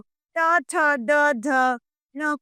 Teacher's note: तीसरा है ट वर्ण जो ट ठ द ध न को सम्मिलित करता है और इनका उच्चारण मूर्धा से होता है